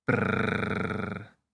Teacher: it helps to make a noise like you're shivering. Brrrr. The B helps you add a hum to the sound.